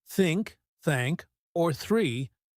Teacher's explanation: For example, many learners have trouble with the the sound. In words like think, thank or three, the tongue should go slightly between your teeth